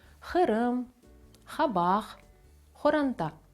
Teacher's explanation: Якщо одразу вимовляти цей звук правильно буде складно, можна використовувати звук «х». Вимовляємо за допомогою горла. Не «хе», а «х».